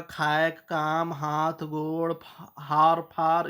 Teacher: निर्नुनासिक एकला मुंह से बोले वाला उच्चारण